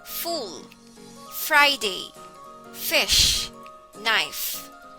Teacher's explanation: pronounced as voiceless or unvoiced fricative that is by pressing the front top teeth against the lower lip